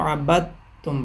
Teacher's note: دال مکمل طور پہ تا میں شامل ہو کے دال ختم ہو جائے گی اس کی آواز